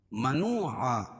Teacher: واو ساکن سے پہلے پیش ہو تو وہ مدہ ہوتا ہے، اس کو ایک الف کے برابر کھینچ کے پڑھیں گے